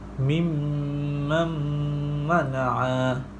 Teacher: Nun mati bertemu dengan huruf mim. Cara bacaannya memasukkan nun mati ke dalam huruf mim beserta dengung 2 harakat. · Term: idgham ma'lunah